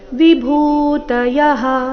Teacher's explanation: ಭೂ ಇಲ್ಲಿ ಮಹಾಪ್ರಾಣ ದೀರ್ಘ